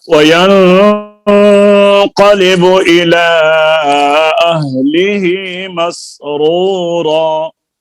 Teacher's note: آگے مسرورہ میں دونوں را جو ہیں وہ پر ہیں